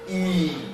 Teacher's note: E, long, close, and unrounded or neutrally positioned